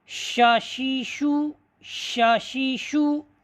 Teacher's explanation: زبان کے جو درمیان ہے وہ اوپر جو درمیانی تالو کا جو درمیان ہے وہاں پر زبان لگ رہی ہے اور یہ حرف ادا ہو رہا ہے۔ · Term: حرف شین